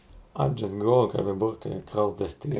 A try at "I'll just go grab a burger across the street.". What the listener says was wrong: Ну, тоже не более не менее, нормально.